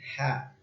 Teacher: Ha juga ini adalah huruf tenggorokan. Dia di pangkal tenggorokan.